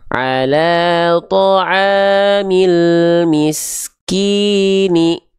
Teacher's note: Mad thobi'i itu harus dibaca dengan kadar panjang dua harakat.